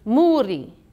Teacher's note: i flipped that r just a little bit with my tongue it's kind of like a soft d